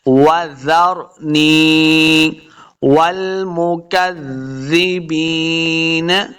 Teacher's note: واو کو جب پڑھیں گے دونوں ہونٹ گول ہوں گے, تب واو کا مخرج صحیح ادا ہوگا.